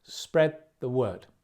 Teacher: Stress on the word at the end.